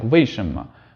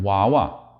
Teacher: Notice the vowel sound that follows the W. In the case of 为 什 么, it's an A which involves a really tight mouth and especially a tight lower lip, whereas in 娃 娃, it's an A which involves a loose and open mouth. So the vowel sound that follows the W naturally influences the way that the W is pronounced.